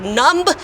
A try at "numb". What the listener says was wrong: you don't need to say the b the B is silent